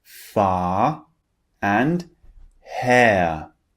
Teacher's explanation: when the r is at the end it just turns into a long vowel sound in these two examples we have far and ha can you